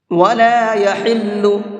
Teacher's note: یہ بڑا ہا ہے تو اس کو درمیانی حلق سے نکالیں گے، یعنی حلق کے مڈل سے نکالیں گے